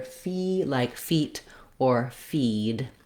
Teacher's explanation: letter E says the tense E sound in this word